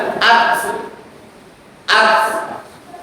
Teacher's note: Ta itu sifatnya mengalir, ada aliran udara. Makanya kalau disukunkan at ya ada hembusan udaranya, ada aliran udaranya.